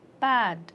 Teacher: bad apart from voice what are the differences do you notice when the last sound has voiced as in bad the vowel before it will be longer